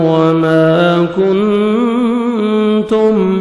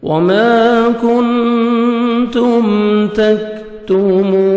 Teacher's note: 1 second میم کو کھینچیں گے، کاف کو باریک پڑھیں گے، نون ساکن کے بعد 15 لیٹرز میں سے تا ہے، یہاں پہ آپ نے اخفا کرنا ہے، نوز میں ساؤنڈ لے کے جائیں گے